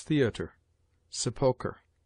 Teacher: RE at the end of some words derived from the Latin or French is pronounced like a weak ER